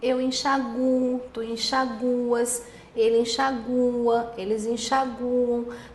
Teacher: Se você pronunciar assim, com a sílaba tônica recaindo no U